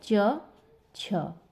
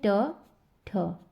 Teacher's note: कोई भी कंपन उत्पन्न नहीं होता है, इसको हम कहते हैं अघोष